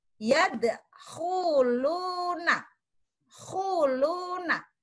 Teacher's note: pada lafal yadkhuluna, khuluna, itu suara ada pada pangkal tenggorokan